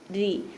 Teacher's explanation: റോ കെസ്റ ആയതുകൊണ്ട് നമ്മൾ താഴ്ത്തി ഉച്ചരിക്കണം